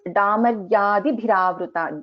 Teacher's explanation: Da is a Alpa Prana, bha is a Mahaprana.